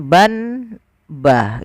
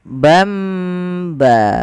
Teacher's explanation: Apabila kita mendapati di dalam bacaan Al-Quran kita, teman-teman, ada nun sukun atau dia tanwin, an, in, un, bertemu setelahnya satu huruf saja, yaitu huruf ba, maka nanti suara nunnya dirubah atau suara tanwinnya dirubah menjadi mim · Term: iklab